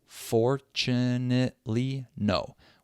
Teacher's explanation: It needs to be the same length as the other phrase, sadly, no, that had just 1 unstressed syllable in the middle. So those 3 unstressed syllables in fortunately, no, have to be really fast. They have to be reduced. · We have 5 syllables there. The first one is stressed, for, and the last one is stressed, no. But now we have 3 syllables in the middle that don't have stress.